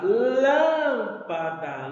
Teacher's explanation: a sílaba tônica dela, a sílaba mais forte, ela está na antepenúltima sílaba. Então, ela é proparoxítona.